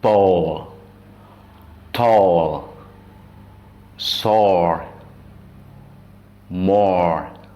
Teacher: bunyi yang ketiga adalah or, panjang